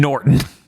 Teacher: Okay, no, you're way too rhotic with that.